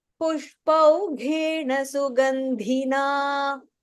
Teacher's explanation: So first line pushpau ish is a mahaprana, and then pushpau ghena gha is a mahaprana. Sugandhina dha is a mahaprana